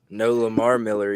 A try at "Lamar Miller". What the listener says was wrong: Yeah, you put that emphasis on the wrong word. Yeah, Lamar Miller.